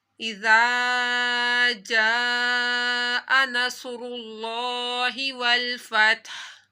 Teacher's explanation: زال کو نرمی سے پڑھا، زال کے آگے الف تھا تو الف مدہ کیا